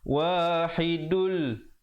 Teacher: Kalau sambung dia akan jadi idgham bila gunnah. Wahidul, asalnya wahidun, tapi bila datang lam jadi masuk terus tanpa dengung